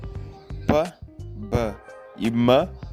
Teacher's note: As consoantes bilabiais são sons que são produzidos com o encontro dos lábios